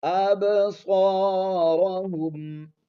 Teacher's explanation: با کے اوپر جزم آ گئی ہے تو یہاں پر آواز کو تھوڑا سا ہلا کر پڑھیں گے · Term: قلقلہ